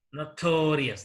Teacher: This word has 3 syllables. Here, the second syllable is stressed here.